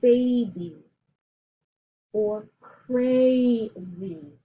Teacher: when it's at the end of a multi-syllabic word it sounds like a long e